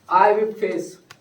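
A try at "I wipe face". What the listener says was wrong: आई विप face. वो pronunciation mistake है, विप नहीं होता, वाइप होता है ना, वाइप।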